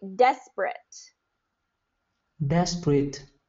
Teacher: I kind of changed the P to the B